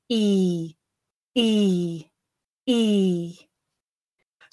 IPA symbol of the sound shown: iː